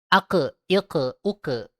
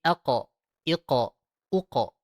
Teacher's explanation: kalau qaf ini ketika diucapkan mantulnya vokalnya nanti condongnya ke o, bukan ke e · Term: qolqf